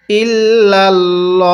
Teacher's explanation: আল্লাহ শব্দের এই লামটাকে আমরা এখানে মোটা করে পড়বো